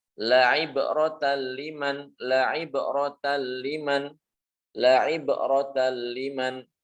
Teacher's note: Berarti cara membacanya berarti dileburkan. Nunnya hilang, langsung masuk ke lam atau ke ro dan tanpa disertai dengan dengung. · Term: idgham bi ghairi gunnah